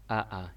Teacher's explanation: AA itu masuk ke area tenggorokan paling bawah. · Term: alif